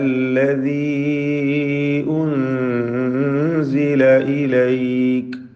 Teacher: സാക്കിന നൂൻ ഇഖ്ഫാ ഹഖീഖി നൽകി അവ്യക്തമാക്കി മണിച്ചുകൊണ്ട് ഉച്ചരിക്കണം, മറച്ച് മണിക്കുക.